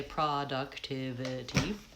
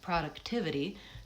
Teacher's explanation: Tivity is very fast. Those syllables are reduced and short.